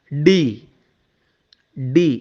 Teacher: இந்த டி அப்படிங்கிறது நாக்கு, அது வந்து பார்த்திங்கன்னா மேலே அன்னத்தில் போய் டச் ஆகும். டச் ஆகாமல் டி சொல்ல முடியாது.